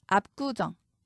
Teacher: 비읍 받침 뒤에서 기역이 쌍기역으로 소리 납니다. 압구정. 된소리로 변하죠.